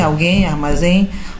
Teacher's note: Então, é um ditongo nasal. Esse M tem o som de I. · E por que é nasal? Porque ele sai pela boca com auxílio das narinas.